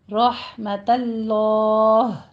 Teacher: رحمت اللہ میں رو بھی پر پڑھی جائے گی، آگے ہا کو وسط حلق سے ادا کرنا ہے